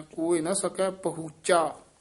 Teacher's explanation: ਝਾ ਨਹੀ ਬੋਲਣਾ ਚਚਾ ਸ਼ੁੱਧ ਬੋਲਣਾ